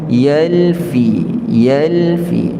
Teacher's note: dan di antara keduanya itu ada bainiah kita Panggil yakni antaranya huruf lam dia ada tempoh juga tetapi tidak selama huruf-huruf rakhawah di beri tempoh yalfi yalfi